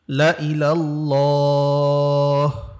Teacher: লাম আলিফ জবর লা, কিন্তু এখানে যেহেতু গোল চিহ্ন আছে আমরা এখানে টান দিব না